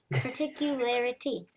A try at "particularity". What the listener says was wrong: Yeah, kind of like that, but a bit faster.